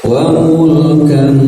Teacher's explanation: tahan dan disamarkan suaranya, siap-siap lidah di posisi huruf yang akan disebutkan, yaitu huruf kaf ya. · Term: ikhfa